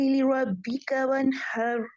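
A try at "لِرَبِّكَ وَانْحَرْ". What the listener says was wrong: را کو اوپر کرے را کو یہ والا لربک وانحر آپ کے را میں تقریر آ رہی ہے جیسے کی آ رہی تھی ابھی ایمن کی لربک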